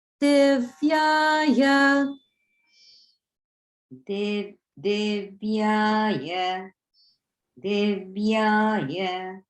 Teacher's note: So both the div and the ya are down, only the ya is middle. So it starts out with lower, then middle, then lower.